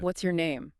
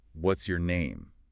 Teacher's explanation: if it falls, what's your name falling? It can sound almost like a demand, a bit abrupt,